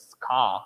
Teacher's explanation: you don't have this R sound, the rhotic sound in the end of the word